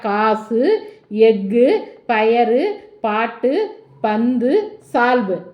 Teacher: உகரம்தான் தனக்குரிய ஒரு மாத்திரை அளவிலிருந்து குறுகி அரை மாத்திரையாக ஒலிக்கும் · ஒலிக்கும் இப்ப நம்ம இந்த பாடத்துக்குள்ள போகலாம் குசுடு துபுற ஆகிய வல்லின உகரங்களும் ஒரு சொல்லினுடைய இறுதியில வரும்போது ஒரு மாத்திரைக்கு பதிலாக அரை மாத்திரை அளவே ஒலிக்கும் இவ்வாறு தனக்குரிய ஓசையில் குறைந்து ஒலிக்கும் உகரம் குற்றியல் உகரமாக அப்ப இந்த குசுடு